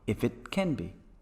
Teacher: the first syllable the consonant is dropped and also can is spoken normally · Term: weakened section